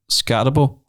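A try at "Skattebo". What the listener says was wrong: Scatterbo. There's no R in it. It's just Scatterbo. Cam Scatterbo.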